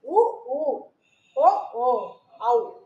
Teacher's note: இந்த எழுத்துக்களும் வந்து இதழ்கள் குவிவதால் பிறக்கிறது · இதழ்கள் வந்து குவிப்பதனால பிறக்குது